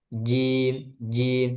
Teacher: Sedangkan dia sifatnya jahar. Tidak ada aliran udara